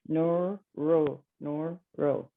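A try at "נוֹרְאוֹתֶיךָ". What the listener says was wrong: No, it goes with the second. It's no rotecha. Well, maybe it's just I go fast, but it's no rotecha.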